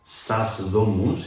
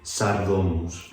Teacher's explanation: And if you want to say the houses, it's sas domus. But when you stick those together, sas becomes sar. So instead of sas domus, you say sardomus